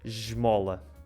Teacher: se fosse uma consoante sonora tipo M, que tem vibração, esmola. Fica j, como ao som do J. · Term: S chiado